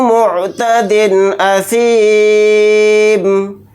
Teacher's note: دال کے نیچے تنوین ہے، تنوین کے بعد حمزہ آ رہا ہے تو اس میں اظہار حلقی کا قاعدہ ہو رہا ہے، یہاں پر ہم اظہار کر کے بلا غنہ کے جلد پڑھیں گے · حالت وقف میں میم کو ساکن بنا کر پڑھیں گے